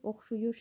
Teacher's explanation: Yəni I saiti U-ya çevrilir, oxşuyur bu şəkildə olur.